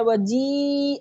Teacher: अलिफ लिखा हुआ है लेकिन हम जीम को या से मिला रहे हैं